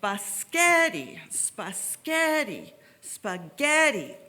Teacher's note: the center syllable was pronounced louder longer and higher than the rest of the syllables